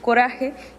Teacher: se acerca al alveolo su modo de articulación es vibrante porque la lengua se aproxima al alveolo y el aire produce un movimiento trepidante en cuanto a sonoridad es Sonora porque las cuerdas vocales tiemblan